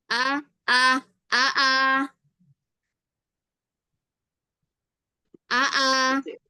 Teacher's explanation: lebih lega ya karena dia kan hanya ee satu makhraj dengan Hamzah. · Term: pangkal tenggorokan